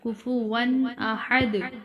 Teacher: یہاں ون پر تنوین ہے لیکن آگے حمزہ ہے اور یہاں غنہ نہیں کیا جائے گا۔ کفوا احد، دال پر قلقلہ ہوگا، احد۔